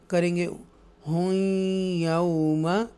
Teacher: ये तनवीन के बाद या मुशद्दा आया है और इदगामे यरमलून है ये, तो यहाँ पर थोड़ा सा गुन्ना भी करेंगे